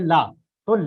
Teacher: मतलब जैसे आप ला बोलोगे, ला, तो ला आप बोल रहे हो तो जीभ का जो सामने वाला भाग है वह आपके मसूड़ों से स्पर्श कर ले रहा है, और जो प्राणवायु निकल रही है वो साइड से बाहर निकल रही है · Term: पार्श्विक व्यंजन